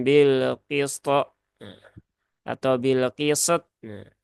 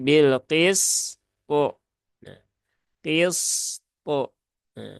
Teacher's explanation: huruf Sin itu sifatnya rakhawah dan huruf th ini sifatnya syiddah maka timbangannya harus di tunaikan Jadi bukan bilqisto nah atau Bilqis · Rokhawahnya belum tertunaikan. Padahal huruf sin itu sifatnya rokhawah dan huruf to ini sifatnya syiddah